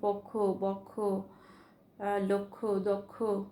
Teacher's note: অয়ের পরে যদি ক্ষীয় থাকে সেক্ষেত্রে অটা ও কারের মতো উচ্চারণ হবে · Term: সংবৃত